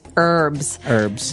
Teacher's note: in American English it's more commonly pronounced as a silent H